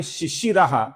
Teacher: शिशिरा जिसमें शी और शी अर्थात दोनों शी ह्रस्व हैं